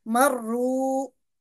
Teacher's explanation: हम इसको मजबूती से भी पढ़ेंगे और इसको मोटा करके भी अदा करेंगे